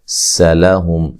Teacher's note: سین کو باریک پڑھنا ہے، لام کو بھی باریک پڑھنا ہے، ہلانا نہیں ہے